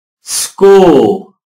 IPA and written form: skuːl (school)